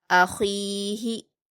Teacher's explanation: ख पर या मद्दा है दो हरकात खींचकर हलक से अदा करेंगे और ख्वा हरूफ मुस्तालिया में से इसलिए पुर पढ़ेंगे